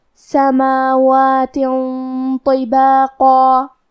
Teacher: طو حروف الاخفاء میں سے ہے اور اخفاء کا معنی ہے چھپا دینا، تو ہم تنوین کو چھپاتے ہوئے اور غنہ کے ساتھ یہ حکم کو ادا کریں گے. کیونکہ غنہ اپنے اگلے والے حرف کا حکم لیتا ہے تفخیم میں اور ترقیق میں، تو طا حروف التفخیم میں سے ہے، تو ہم یہ غنہ کو بھی بھاری آواز میں ادا کریں گے.